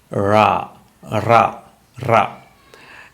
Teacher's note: the ra you had to hear some friction sound